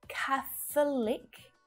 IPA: ˈkæθ(ə)lɪk